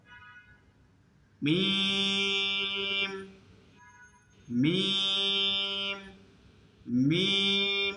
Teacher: আর শুকনা ঠোঁট থেকে মিম উচ্চারিত হয়।